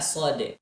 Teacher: Kalau dalam bahasa Arab itu Shod, kemudian Fathah, Dal. Nah, ketika kita mengucapkan huruf Shod, maka dalnya tetap terbaca dan berikan sifat huruf dal ketika sukun yaitu qalqalah